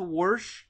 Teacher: they add an R to wash